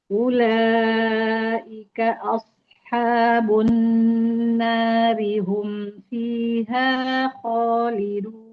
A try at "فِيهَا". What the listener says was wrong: Iya, haknya jangan diangkat fiha, fiha, fiha di fi-nya saja. Sekali lagi fiha.